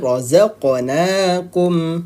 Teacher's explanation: qalqalah sughra pantulan lebih kecil